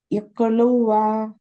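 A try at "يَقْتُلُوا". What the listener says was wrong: லூவா? 3வது எழுத்து லூ. ஏன் வாவுக்கு ஹரக்கத் கொடுத்து உச்சரிக்கீங்க? ஏன் வாவுக்கு ஹரக்கத் கொடுத்து உச்சரிச்சீங்க? இக்குதுவா அப்படின்னீங்கல்ல, ஏன் ஹரக்கத் கொடுத்து உச்சரிக்கீங்க? அது ஃபத்ஹாவா? அது வந்து மத்தினுடைய சிம்பல். அது வாவ் மத்து.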